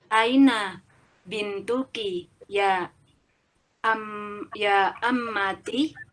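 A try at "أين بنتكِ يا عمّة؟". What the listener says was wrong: Ya, ahsan ya.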